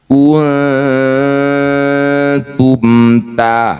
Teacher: Bunyi nun dengungkan dua harakat ketika dengung. Lisan kita sudah bersiap bunyikan ta. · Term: ikhfa aqrab